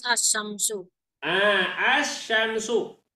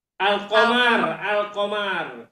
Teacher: Jadi kalau idgham itu lamnya dimasukkan kepada shin, sedangkan idhar lamnya dibaca jelas.